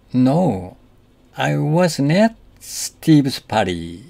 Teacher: Notice that the emphasis here is on at. Although prepositions normally have weak stress, in this case, at means there.